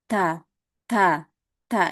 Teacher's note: Keluar anginnya natural aja ya. Kalau kita ngomong ta itu sudah otomatis keluar anginnya gitu. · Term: sifat hames